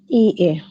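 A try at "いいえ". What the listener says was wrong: ইয়ে, ইটা একটু লম্বা উচ্চারণ হবে, ই এ।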